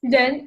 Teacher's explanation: It's the second tone. So you go up. It's not like you go down.